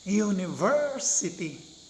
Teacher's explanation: So, the third syllable is stressed or accented. Kung saan tumataas ng konti yung ating boses, where we put the emphasis, that syllable is stressed or accented.